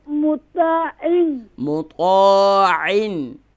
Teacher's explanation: Ain sound is pronouncing from middle of throat